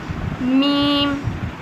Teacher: میم بیرونی ہونٹوں کے ملنے سے ادا ہوگا